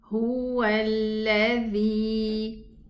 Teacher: We're going to drop hamzatul wasli and we are going to move from the waw dhamma to the lam shadda. Make sure that you don't stay at the lam shadda for a longer time.